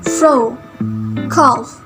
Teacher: air is forced through the upper teeth and lower lip